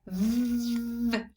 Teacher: When I say v, the sound is on, and I know that because my voice box is vibrating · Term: voice on